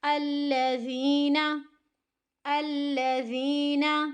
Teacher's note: زال کو ہمیں نرمی سے پڑھنا ہے، دونوں دانتوں کے درمیان زبان کی نوک کو رکھتے ہوئے